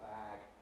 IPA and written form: bæg (bag)